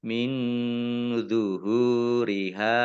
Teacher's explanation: nun sukun bertemu dengan huruf dha bacaan ikhfa dibaca samar-samar. Hak dumah wawu sukun mat tobi'i kemudian hak fathah alif juga mat tobi'i masing-masing dibaca panjang 2 harokat.